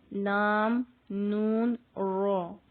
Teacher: اب آتے ہیں زبان کی ٹپ پہ، ٹھیک ہے، جو طرف لسان ہے. یہاں سے لام، نون اور رو ادا ہوتا ہے